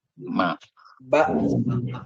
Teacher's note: yang tertutup itu ada ba sama ada ma. Ya. Itu 2 bibir.